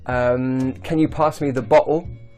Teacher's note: they use the glottalization of the /t/ so they mean 'bottle'